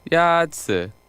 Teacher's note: Yazi is pronounced with a first tone.